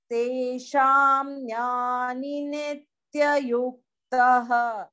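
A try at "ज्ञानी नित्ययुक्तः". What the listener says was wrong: No. No. Jnani is prolonged vowel.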